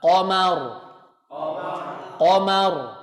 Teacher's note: Begitu ro-nya disukunkan, ro tebal.